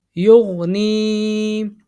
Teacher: یہ یا مد ہے، اس کو ایک انگلی کی مقدار کے برابر کھینچے کے پڑیں گے.